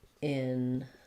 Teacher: So for enlighten, we can either say this first E as an or you may hear it also kind of more as an because it's again in a prefix, unstressed. Enlighten, light has the main stress, and then it's just like the word light.